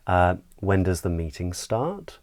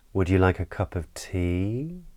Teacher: we tend to use this rising intonation pattern when we’re asking questions. So the pitch of our voice tends to go up.